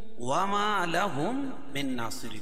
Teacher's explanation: وما لهم من، اور یہاں نون ساکن کے بعد ادغام مع الغنہ کے 4 حرفوں میں سے نون ہے تو یہاں غنہ کر کے پڑھیں گے، اور نون کے اوپر کھڑا زبر ہے، کھڑا زبر قائم مقام الف مدہ کہ اس کو ایک الف کے برابر کھینچ کے پڑھیں گے. صاد کو پور پڑھیں گے، را باریک پڑھی جائے گی، کیوں؟ را کے نیچے زیر ہے.